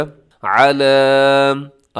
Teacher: नज़्ज़लना अला, आगे क्या है, आइन के ऊपर ज़बर है, लाम के ऊपर खड़ा ज़बर है। आइन को नहीं लंबा करना और लाम को आपने थोड़ा सा लंबा कर देना है।